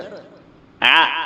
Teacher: ആ എന്ന് ഉച്ചരിക്കുമ്പോൾ തീരെ കാറ്റ് പുറത്തേക്ക് പോകുന്നില്ല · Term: ജഹ്റ്